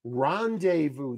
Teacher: three- syllable word stress on the first syllable